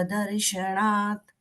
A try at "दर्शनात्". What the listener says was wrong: ण का उच्चारण नहीं है जो ण का उच्चारण है वो मूर्धन्य है यहां पर न है